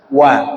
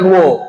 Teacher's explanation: Wa baris di atas apa kita baca wa bukan wo